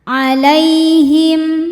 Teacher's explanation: Lai ada harfu lin atau huruf lin Sebab ada ya sukun didahului harokat fathah ya, maka dibacanya lembut atau lunak.